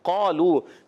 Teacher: قاف کا مخرج زبان کی جڑ اور تالو کا نرم حصہ